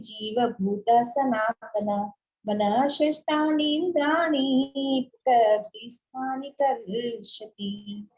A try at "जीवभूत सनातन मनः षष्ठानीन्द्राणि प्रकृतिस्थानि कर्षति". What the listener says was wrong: बहुत सुंदर।